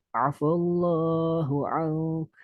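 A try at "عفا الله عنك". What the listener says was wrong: Kurang tebal. Lamnya lebih tebal.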